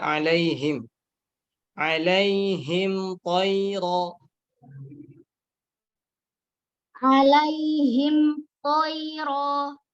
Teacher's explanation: Ingat, hati-hati di mim. Mim jangan terlalu banyak guna. Di sini mim dalam keadaan sukun.